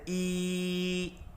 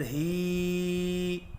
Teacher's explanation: کھڑی زیر کو ہونٹوں کے نیچے کی طرف کھول کر تھوڑا سا کھینچ کر پڑھا جاتا ہے، جیسا کہ حمزہ کے نیچے ہے تو حمزہ کھڑی زیر ای، ہا کھڑی زیر ہی، اور اس کی آواز کا رخ نیچے کی طرف ہوتا ہے۔